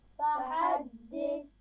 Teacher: फ़हद्दिस आखिर में सा है तो इसमें सीटी नहीं होनी चाहिए